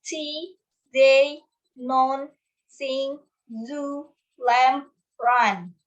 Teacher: alveolars, formed by putting the tongue on the alveolar ridge, which is the gum line above the top teeth, like the, n, s, z, o, and sounds.